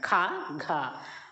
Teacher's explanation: ఒత్తు అక్షరాలు అన్నమాట ఖ ఘ అనేటటువంటి రెండు రెండు నాలుగు మహాప్రాణులోకి వస్తాయి